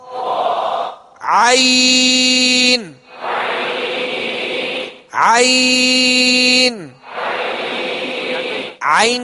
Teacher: عین کو وسط حلق سے ادا کریں گے، جہاں سے ہا ادا کیا وہیں سے عین کو ادا کرنا ہے